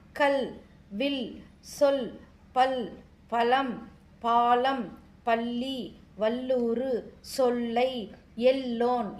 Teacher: நாவின் இரு பக்கங்கள் தடித்து நா மேல்பற்களின் அடியை தொடுவதால் அதாவது மேல பல்லினுடைய அடிப்பக்கத்தை தொடுவதால் ஒற்றுவதால் லகரம் தோன்றும். படத்தை பார்த்தா உங்களுக்கு தெரியும் நாவின் அடிப்பகுதி அதாவது மேல் பற்களினோட அடியில இந்த லகரம் தொடுது. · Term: ஒற்றல் லகரம்